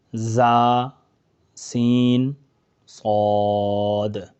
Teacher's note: ये तीन रूफ ऐसे हैं जिनमें हमेशा सीटी की आवाज आएगी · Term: सीटी वाले हुरूफ